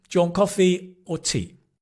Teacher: If it's a either or question then it rises and falls. Uh well, it falls at the end.